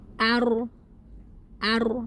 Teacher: Ro sukun didahului oleh huruf berakat fathah maka dibaca tebal.